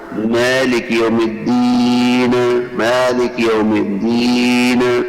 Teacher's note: قلقلۃ حرف النون عند الوقف علیہا، الدین کا وقف کرتے وقت نون میں قلقلہ پیدا کر دینا